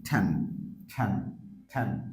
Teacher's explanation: সেই ক্ষেত্রে জিহ্বার মাঝার অংশটা উপরের অংশের সাথে শক্ত করে লাগবে